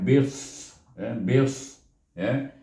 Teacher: huruf sad tu dia tebal sedikit